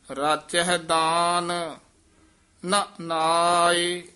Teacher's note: ਰਾਚਹਿ ਦਾਨ ਇਥੇ ਠਮਕ ਲਾ ਦੇਣੀ ਹੈ ਫਿਰ ਬੋਲਣਾ ਨਾ ਨਾਇ